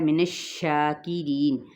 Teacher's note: ری باریک ادا کرتے ہوئے یہ مدہ ہے ، نون پہ وقف کیا تو وقف بال اسکان ہوگا یہاں